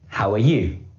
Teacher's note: in this sentence the stress is on how and you the unstressed word in this sentence is are and it's produced